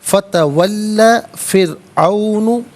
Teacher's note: فا تولا دونوں کے دونوں علیحدہ ہیں، ملا کر پڑھیں گے فتولا. پھر عون را ساکن ماقبل فا کے نیچے زیر ہے تو را ساکن کو باریک کر کے پڑھا جائے گا